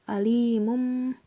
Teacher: Alimum bima, alimum itu adalah iklab karena huruf mim berharokat domah, tanwin bertemu huruf ba. Cara membacanya dengan tanwin berubah menjadi mim dan berdengung, serta ditahan selama 3 harokat.